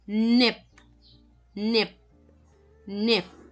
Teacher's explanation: So, yung P sa pag nasa huli yung P nagiging na-cut off yung sound ng P, di ba? Is, instead of my puff of air, nasa-stop siya kasi siya yung ending. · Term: Unreleased